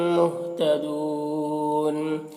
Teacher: مہتدون یہاں پر وقف کی صورت میں نون کا زبر سکون سے بدل جائے گا تو مد عارض وقفی ہوگا تو اس طرح سے پڑھیں گے۔